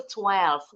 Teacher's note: Enggak ada intonasinya karena cuma satu suku kata.